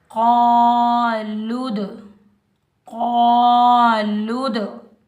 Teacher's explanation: लाम के ऊपर पेश है, लाम को हम दाल साकिन के साथ मिलाएंगे। दाल पर हम कलकला करेंगे, डबल साउंड आएगा, टकराव पैदा होगा